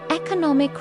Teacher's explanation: But economic e-co- no- mike. Stress moves to third syllable.